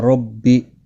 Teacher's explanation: را زبر کی وجہ سے پر پڑھا جائے گا